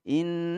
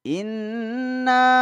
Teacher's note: kita kehidungkan suaranya Suaranya mendengung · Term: musyaddad maal gunnah